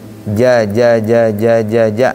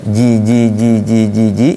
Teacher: Untuk jim dia posisinya di tengah tengah lidah.